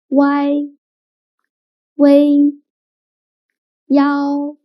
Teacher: When pronouncing these 3 finals, the middle sound should be the longest and loudest one.